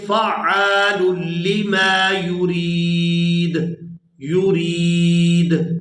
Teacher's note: اب یہاں پر آیت ختم ہو رہی ہے، وقف کریں گے تو وقف کی صورت میں دال جو ہے یہ ساکن ہو جائے گی، اور یہ جو دال ہے حروف قلقلہ میں سے ہے، حروف قلقلہ 5 ہیں، ان میں سے ایک یہ دال ہے۔ دال جب ساکن ہوگی تو یہاں اس پر قلقلہ ہوگا، تو اس کو پڑھیں گے فعال لما یرید، یرید، یہ قلقلہ ہو رہا ہے دال پر، فعال لما یرید۔